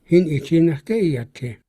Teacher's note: he stays true to the tones of the language, where you have a high tone ge, but then iat is low